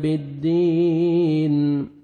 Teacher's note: یا مدہ, 1 سیکنڈ دال کو کھینچیں گے, لاسٹ میں نون ساکن ہو جائے گا.